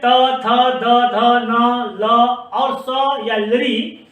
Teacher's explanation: तो जीव सभी दांतों को छूता है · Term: दंत्य वर्ण